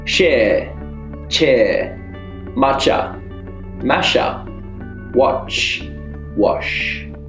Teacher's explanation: But remember, sh is a long tunnel sound and ch is a short tap.